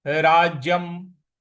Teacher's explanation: राज्यम, ज पर हमको थोड़ा सा बल लगाना है। राज्यम, य पर जो अनुस्वार है उसका उच्चारण हमें म ले आना है